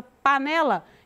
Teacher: o né é a sílaba tônica.